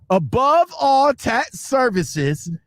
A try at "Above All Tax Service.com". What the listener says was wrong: Drop that S. Above all tax service.com.